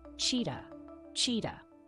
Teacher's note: For the chi sound, open your mouth and produce a clear ch sound, which is a voiceless post-alveolar affricate. For the ta sound, close your mouth and produce a clear t sound.